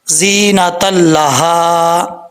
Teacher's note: ہا جو ہے یہ بھاری ساؤنڈ کے ساتھ پڑھا جائے گا، ایک الف کی مقدار لمبا کیا جائے گا۔